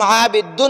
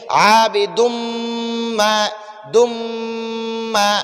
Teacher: یہ دال کی جو تنوین ہے اس کو ہم میم مشدد میں داخل کریں گے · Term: مدغم